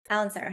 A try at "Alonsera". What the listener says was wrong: Alonsera. You want to pronounce the O, Alonsera.